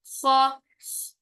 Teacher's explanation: जब हम मुतहरिक हालत में अदा करते हैं तो पहले सांस होता है, बाद में आवाज आती है, जैसे ख्वा, पहले सांस और फिर ख्वा, ठीक है। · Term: सांस जारी